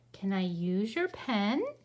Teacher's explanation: my voice goes up because i'm asking